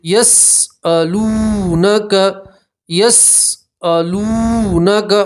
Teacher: واو مدہ اس لیے آپ ایک الف کے برابر کھینچ کر پڑھیں گے